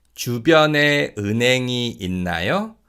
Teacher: you can hear that the 히읗 in the second syllable in 은행 is pretty much silent